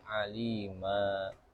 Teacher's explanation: diwakafkan maka bacanya dengan fathah yang mad dua harakat saja. Aliman jadi alima dua harakat. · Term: mad iwad